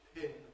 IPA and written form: pʰɪn (pin)